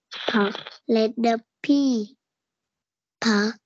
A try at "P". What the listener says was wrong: Nhẹ nhàng thôi. P p p đâu. Em bật môi ra như thế thì nghe nó rất là nặng. Nghe như có chữ p ấy. Đọc thế thì mình dễ bị nhầm ấy.